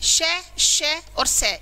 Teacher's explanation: और स यह क्या होते हैं यह अघोष वर्ण होते हैं इनको बोलते समय हवा जरूर ज्यादा निकलती है मुंह से बाहर लेकिन स्वर तंत्र पर कंपन नहीं होता